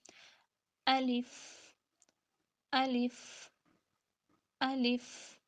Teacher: منہ کے خالی حصے سے ادا ہوتا ہے۔ جب ہم اس کو ادا کریں گے تھوڑا سا سانس بھی اس میں آتا ہے۔